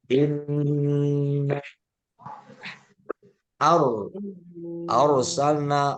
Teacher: ro sukun sebelumnya fathah tebal tafkhim